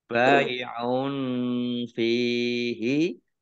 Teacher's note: Bai'un fihi domah tanwin bertemu dengan huruf fa bacaan ikhfa dibaca samar-samar. Fihi fa kasroh ya sukun mat tabi'i wala lam fathah alif mat tabi'i panjang 2 harokat.